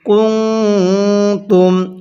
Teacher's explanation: এই নুন সাকিনটা গুন্নাহ করে পড়বেন